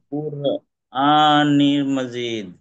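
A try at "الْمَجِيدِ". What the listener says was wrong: নি না তো নীল, নুন লামজের নীল, মিম জবর মা, জিম ইয়াজের জি, দাল জের দি, মাজিদি বা মাজিদ।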